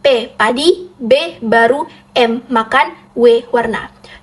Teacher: Satu, hambatan bilabial, yaitu bunyi yang dihasilkan dengan mempertemukan kedua belah bibir atas dan bawah yang bersama-sama bertindak sebagai artikulator dan titik artikulasi